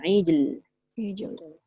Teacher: dekat ijl, mesti kena bunyikan jim qalqalah tu, lepas tu bunyikan lam.